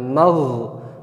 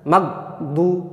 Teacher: ketika ghainnya disukun maka kita biarkan saja suaranya terlepas. Jangan magdu ya. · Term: ghain sukun